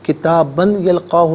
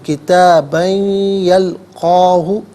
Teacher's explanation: کتابن میں با پر دو زبر کی تنوین سے یلقا کی یا کے ساتھ ملائیں گے اور ناظرین یا کی آواز کو غننے کے ساتھ ادا کریں گے۔ کتابن یلقاہ نہیں، کتابن یلقاہ، یہاں یرملون کا جو قاعدہ وہ اپلائی ہوگا۔